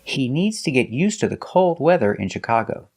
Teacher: used and to is pronounced T So together you hear UST you link the words used to and you hear USTA